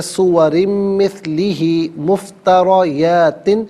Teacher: مفتریات میں را پر زبر ہے، را کو پر کر کے پڑھیں گے